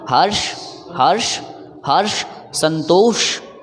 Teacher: अपने जुबान को मूर्धा में टच करते हुए घर्षण पैदा किया। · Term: मूर्धन्य श